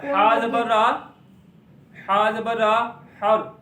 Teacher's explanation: रा साकिन से पहले जबर है तो रा को हमने मोटा पढ़ना है।